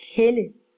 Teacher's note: Så lyder den korte vokal her faktisk lidt mere som et Æ end som et E